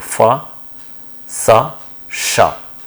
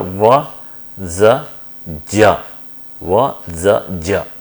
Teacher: corresponds to unvoiced fricatives like fa, sa, sha, and similar to that in case of their voiced counterparts are va, za, ja